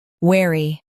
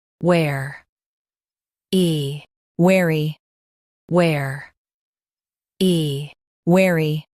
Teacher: In US, stress wear and keep y light.